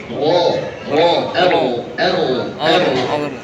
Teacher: ro juga tidak yang bergetar hebat